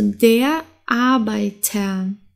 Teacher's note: wenn wir zuerst ein Vokal und dann das R haben dann wird das R wie ein a ausgesprochen